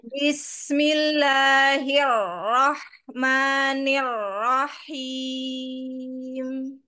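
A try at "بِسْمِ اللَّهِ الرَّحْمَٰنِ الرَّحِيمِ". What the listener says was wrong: masih PR huruf ro ya karena terdengar masih ee seperti cadel ya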